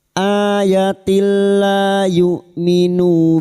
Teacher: masuk pada huruf lam tanpa mendengung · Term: idgham bila gunah